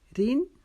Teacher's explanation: زیر کی وجہ سے را کو باریک پڑھیں گے